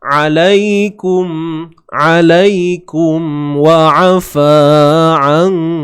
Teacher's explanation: Alaikum wa afa an. Lai kat sini bacaan lunak, bacaan lin. Ya mati sebelumnya baris atas. · Huruf Ain sempitkan di bahagian tengah kerongkong kita.